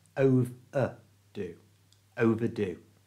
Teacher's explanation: For example, if you overdo drinking coffee, you might not be able to sleep. Notice the ER in overdo is pronounced like a schwa